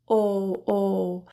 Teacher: focus on rounded lips oh oh the jaw is slightly open